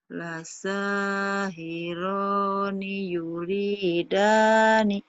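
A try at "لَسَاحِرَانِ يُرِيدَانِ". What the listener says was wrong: Lasahi bukan khi, hi. Lasahirani yuridani.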